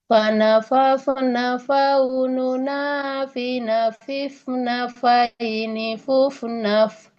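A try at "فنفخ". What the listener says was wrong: Masih ada pantulan Bu. Nah, kenapa ini mantul? Karena diucapkan seperti ini. Fanafaf. Nah, dilepas. Fanafaf. Nah, harusnya fanafafna. Jadi ketika menyentuh ke perut bibir bawah langsung masukkan ke huruf selanjutnya. Fanafafna. Fanafafna, tidak fanafaf. Nah, jadi tidak jangan dulu dilepas tapi dilangsungkan masuk ke huruf selanjutnya.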